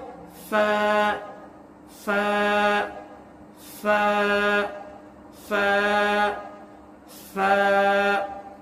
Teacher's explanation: सनाया उलिया का सर और नीचे के होठ का अंदरूनी हिस्सा